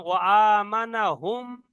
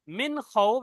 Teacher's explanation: ওয়ামানাহুম এখানে তো মিম সাকিন গুণনা হবে কিন্তু মিন খৌফ এখানে গুণনা হবে না